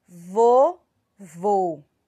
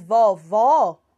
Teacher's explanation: não é isso para falar mas como eu falo vovô certo eu faço aquele meio que o biquinho para falar e o som ele sai de forma mais fechada